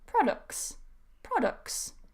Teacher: So instead of saying products, I can say products. So I just move straight to the s sound from the k.